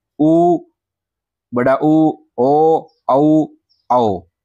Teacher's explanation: जिन स्वरों के उच्चारण में होठों का आकार गोलाकार हो जाता है उन्हें वृताकार स्वर कहते हैं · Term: वृत्ताकार स्वर